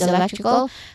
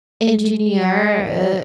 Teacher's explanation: one word electrical flows softly towards the end while the next engineer rises sharply